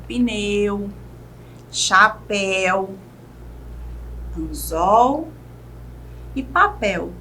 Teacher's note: o U e o L no final das palavras são pronunciados de maneira praticamente igual